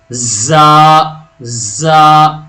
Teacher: آواز بھاری ہوگی اور رگڑن بھی اس میں پیدا ہوگی